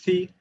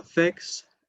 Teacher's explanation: Then we have the th which represents the voiceless interdental fricative ([θ])